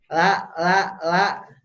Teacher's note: tapi yang harus digaris bawahi la jangan keluar dari Gigi Pak la itu di belakang gigi ya La La di tempat gusi dan belum belum ngadu ke giginya